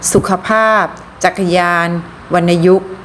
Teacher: ออกเสียงอะกึ่งเสียงระหว่างคำ